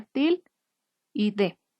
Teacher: la penúltima sílaba es donde recae el acento, porque es donde suena más fuerte la pronunciación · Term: acento prosódico